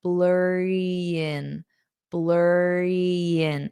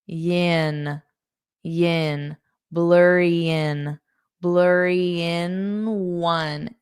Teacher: So instead of in, it sounds like yin. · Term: linking